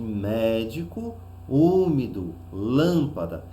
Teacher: nós vamos perceber que a antepenúltima recebeu maior destaque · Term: proparoxítonas